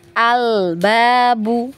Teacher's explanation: Jadi jangan ditarik, biarkan dia di posisinya dulu huruf lamnya ya. Al-babu baru masuk di huruf ba ya. Jadi kalau ditarik lidahnya itu biasanya memang memantul ya. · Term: lam sukunnya